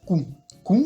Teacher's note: quand on a ces doubles lettres il y a aucune expiration d'air